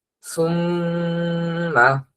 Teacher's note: নুন অথবা মিমের তাসদিদ পেলেই এখানে গুন্না করতেই হবে। এখানে গুন্না ছাড়া অন্য কোনো ভাবেই উচ্চারণ করা যাবে না।